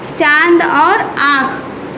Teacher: उच्चारण में हवा नाक और मुंह दोनों से बाहर निकलती है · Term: अनुनासिक